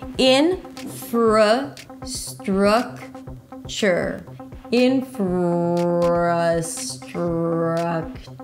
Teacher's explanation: Infrastructure, primary stress on the first syllable and then a lot of reduced syllables.